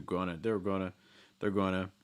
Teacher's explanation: we've kind of heard that linking going on with going to getting reduced to just gonna.